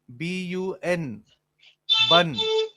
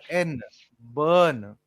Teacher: It is the R which works as a half vowel and that extends the sound.